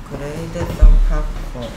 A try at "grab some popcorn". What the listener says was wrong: B하고 D하고 헷갈려요? grab some popcorn. 왜 grad예요, 얘가? grad입니까, 얘가? Grab some popcorn.